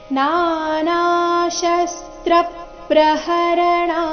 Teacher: ಣ ಆದ ನಂತರ ಇರೋ ವಿಸರ್ಗದ ಉಚ್ಚಾರಣೆ ಅರ್ಧ ಸ ರೀತಿ ಬರಬೇಕು ಇಲ್ಲಿ ಶಸ್ತ್ರ ಅಲ್ಲಿ ತ್ರ ಮೇಲೆ ಆಘಾತ ಕೊಡಬೇಕು ಯಾಕಂದ್ರೆ ಮುಂದೆ ಪ್ರ ಎಂಬ ಸಂಯುಕ್ತಾಕ್ಷರ ಬಂದಿದೆ